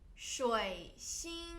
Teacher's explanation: 水 third tone, 星 flat tone